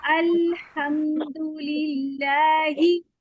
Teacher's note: जल्दी से ना मीम पे आप ना हल्का सा थोड़ा सा ठहर जाओ। मीम पे पूरे होठों को मिला के फिर पढ़ो